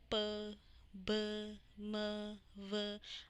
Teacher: आपका जो lower lip है वो मूव कर रहा है जबकि अपर लिप मूव नहीं कर रहा। तो आपका जो लोअर लिप है वो अपर लिप के साथ टच हो रहा है।